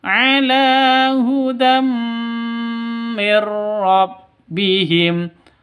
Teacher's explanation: tanwin bertemu dengan mim cara bacanya masuk ke mim disertai dengung dua ketukan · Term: Idgham Bighunnah